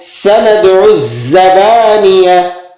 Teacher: سین حروف صفیریہ میں سے ہے، سیٹی کسی آواز نکلے گی، اور زا بھی حروف صفیریہ میں سے ہے